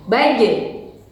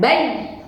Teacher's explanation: Huruf jim ketika sukun maka harus dikolkolahkan, dipantulkan. Baje. Bukan baj, ya, tertahan, tapi harus dipantulkan.